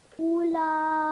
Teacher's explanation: So now the lam has mad kabir and vertical fatha, which means that not only you're going to prolong the mad kabir for 4 to 6 seconds, but you're also prolonging the vertical fatha for 2 seconds. So in total, you're going to prolong it for 6, 7, 8 seconds.